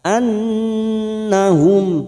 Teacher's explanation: nun yang bertasdid gunna musaddada kita dengungkan selama 3 harakat